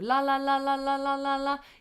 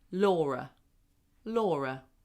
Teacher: So a light L is what you're used to. La, you just lightly tap the tongue there.